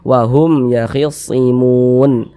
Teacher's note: Mun dibaca panjang, ini namanya mad arid li sukun.